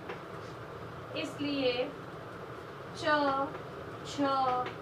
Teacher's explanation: व्यंजन च वर्ग के बोलने में सांस कुछ घर्षण के साथ निकलती है, घर्षण के साथ निकलती है। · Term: स्पष्ट संघर्षी